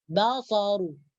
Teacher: Dibaca tebal ru. Karena baris hadapan atau harakat dhammah.